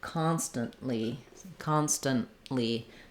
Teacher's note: a Lee syllable and we definitely use the unreleased T there